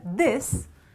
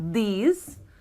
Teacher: Now the word this has a short sound, okay? And the word these has a very long sound